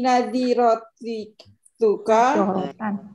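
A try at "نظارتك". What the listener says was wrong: Nadzarah nadzar bukan nadzirah. nadzaratuka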